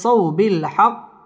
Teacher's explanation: জবরের বাম পাশে জজম ওয়ালা ওয়াও লিনের হরফ তাড়াতাড়ি পড়তে হবে